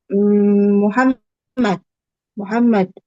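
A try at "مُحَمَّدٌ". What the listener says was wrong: Muhammadun. Harus dibaca semua tanwinnya ya. Ketika membaca, jangan di wakaf.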